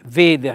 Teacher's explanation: chiaramente l'accento è sulla e, è un accento fonico chiuso